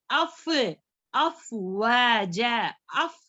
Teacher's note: ऊपर के दांत जो है सनाया उलिया हमारे, वो नीचे के होंठ के पीछे टच करें।